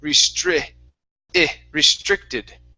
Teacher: So instead of saying restricted with a short E, it's I. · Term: the short I sound